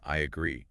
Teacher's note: You are connecting the I sound directly into that schwa sound of agree. Ah. It creates a kind of fluid bridge.